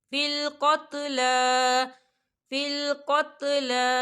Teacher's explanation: لام کے پر کھڑی حرکات ہے تو ہم اسے 2 حرکت کے برابر کھینچیں گے